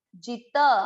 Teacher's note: त पूरा मतलब त में अ मिक्स करना है